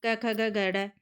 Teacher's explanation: जो क वर्ग है वो हमारे कंठे से बोला जाता है